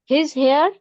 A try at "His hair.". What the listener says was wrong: Falling करो, अब statement है तो स्टार्टिंग में राइज होगा फिर फॉल हो जाएगा. नहीं, यू आर आस्किंग क्वेश्चन, ये क्वेश्चन लग रहा है. Make it statement. हेयर को है ना, इसको थोड़ा कम स्ट्रेस देके बोलो हेयर को.